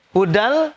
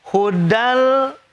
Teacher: Tapi kalau wasol karena masuk ke lam dibaca hudan, ini hudal masuk ke lam. Idgham bila guna, masuk tanpa pakai dengung. Hudal cepat.